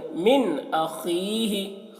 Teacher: یہاں پر نون ساکن کے بعد حروف حلقے میں سے حمزہ آ رہا ہے، تو یہاں پر نون میں اظہار واقع ہوگا، نون کو ظاہر کر کے پڑھیں گے، یہاں پر غنہ اور اخفا نہیں کرنا ہے